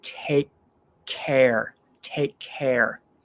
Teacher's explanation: the K from take and the C from the C in care they connect so you don't need to say take care put them together